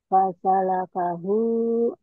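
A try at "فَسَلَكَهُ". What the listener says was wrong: Fasalakahu. Bagus.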